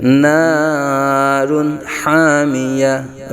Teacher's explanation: دو پیش کی تنوین کے بعد حروف حلقی میں سے ہاں آنے کی وجہ سے اظہار حلقی کا قاعدہ ہوگا، یعنی غنہ نہیں کریں گے